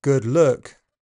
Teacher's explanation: In GB, the sound is very close to central unrounded uh good look except before dark L when it is further back uh and rounding is more likely. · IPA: /ʊ/